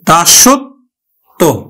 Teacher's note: ব ফলা যুক্ত ব্যঞ্জনটি দুইবার উচ্চারিত হলো